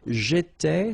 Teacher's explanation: so final S not pronounced